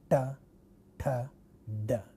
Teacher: But another place of articulation which is adjacent to the place of articulation from where we get retroflex sounds, remember, we get a retroflex sounds by curling the tip of the tongue backward, and then it hits hard palate area or teeth ridge area, and thus we get a retroflex sound like ta.